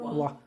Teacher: केवल व का उच्चारण कीजिएगा, वाह। दंत भी है और ओष्ठ भी है, तो इसे कहेंगे दंतोष्ठ